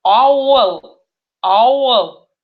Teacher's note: буковка А говорится немножко олаштрып, то есть немножко она оализуется